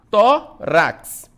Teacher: Então, penúltima sílaba, o tó, é uma paroxítona, recebe acento.